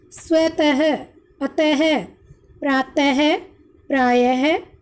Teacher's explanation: हिंदी में विसर्ग का उच्चारण समाप्त हो चुका है। इसे भी अब ह के रूप में ही बोला जाता है